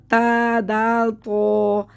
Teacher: ہماری جو زبان کے جو یہ نوک ہے یہ ہماری اوپر والے دانتوں کی جڑ میں لگتی ہے۔ آپ پڑھ کے دیکھیں، آپ کو پتہ چلے گا، منہ بند کر رکھیں، ہماری زبان اوپر والے دانتوں کی جڑ میں لگے گی، تو تا دال تو یہ تینوں حروف ادا ہو جائیں گے۔ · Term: حروف نطعیہ